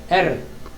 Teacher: Porém, o R, tanto o R este que estamos falando, o do Faraó, deve ser o R na ponta da língua, não aquele R, esse não serve.